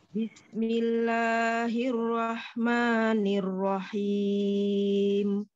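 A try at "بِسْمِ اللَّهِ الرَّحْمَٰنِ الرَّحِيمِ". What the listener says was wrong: Bismillahnya sinnya kurang apa namanya tuh? Kurang dengarnya seperti kayak bismillah tadi kayak diputus bis Bismillah. Jadi di ini kan jangan sampai diputus. Bismillah seperti itu.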